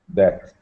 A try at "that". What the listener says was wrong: Okay, I just put that because you were having some TH problems, so just be aware of your TH sound. That.